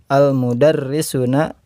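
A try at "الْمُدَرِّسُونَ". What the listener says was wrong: Sunya panjang. Al-mudarrisuna ghidobun.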